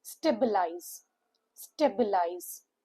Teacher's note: Three syllable word. stress is on the first syllable.